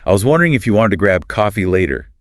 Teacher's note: it's rhotic, meaning that the R sound is pronounced clearly in all positions